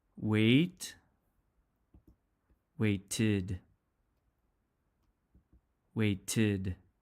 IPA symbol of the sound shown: ɪd